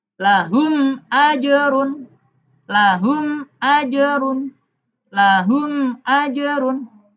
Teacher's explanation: mimnya dibaca jelas tanpa dengung dengan bibir tertutup. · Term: idhar syafawi